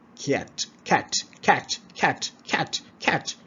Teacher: It needs to start with a bit of y sound, a sound, y sound in it.